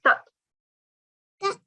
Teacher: So this ta is first of all a qalqala letter. Also, it's a thick letter as we learned today, yeah?